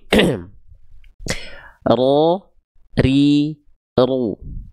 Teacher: Tetap getarannya dia nggak terlalu banyak, sedikit aja, tapi tetap tegas, jelas. · Jadi huruf ro itu dia punya sifat bergetar si lidahnya tuh, tapi bukan dengan getaran yang berlebihan. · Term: takrir